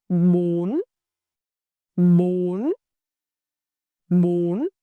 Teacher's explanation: raising pitch like asking a short questions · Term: sac